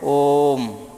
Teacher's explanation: ओ का उच्चारण कम से कम तीन मात्रा तक होना चाहिए फिर उसके बाद मैन का उच्चारण होना चाहिए · ओ का उच्चारण लगभग तीन मात्रा तक हो रहा है या तीन मात्रा से अधिक हो रहा है · ओ का उच्चारण कम से कम 3 मात्रा तक होना चाहिए, फिर उसके बाद माँ का उच्चारण होना चाहिए। हम ओम ऐसे ही तो बोलते हैं ओम, तो इसका मतलब कि ओ का उच्चारण लगभग 3 मात्रा तक हो रहा है या 3 मात्रा से अधिक हो रहा है, फिर उसके बाद हम माँ का उच्चारण कर रहे हैं, इसलिए इसको त्रिमात्रिक स्वर कहा जाता है। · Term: tirmatrik स्वर, प्लुत स्वर